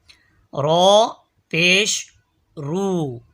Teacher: र जबान का किनारा पुष्ट समेत दांतों की जड़ से अदा होता है · رو زبان کا کنارہ پشت سمیت دانتوں کی جڑ سے ادا ہوتا ہے